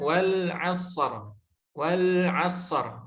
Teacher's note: Lebih lama kadar mengalirnya huruf shad dibandingkan dengan huruf ro. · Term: rokhawah